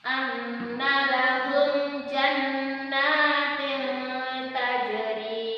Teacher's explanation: ada tanwin, ya, bertemu huruf ta, maka dia bacaannya disamarkan. Kalau dalam hukum tajwidnya dinamakan ikhfa.